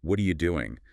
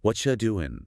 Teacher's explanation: The R gets swallowed, the U becomes ya or cha.